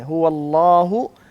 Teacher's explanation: تلاوت کے اندر آپ ہلکا سا پاز لیں هو اللہ تاکہ حمزہ واضح ہو جائے